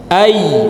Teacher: makhrajnya dari punggung lisan nempel ke atas.